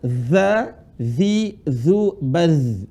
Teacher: Dialirin suaranya ketika sukun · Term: huruf za